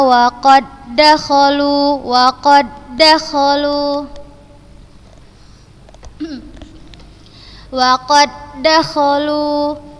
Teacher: Dan Ustazah membacanya tanpa gunnah. Ini juga huruf dal sukun bertemu dengan huruf dal berharokat, maka membacanya langsung ke huruf yang kedua dan tanpa gunnah.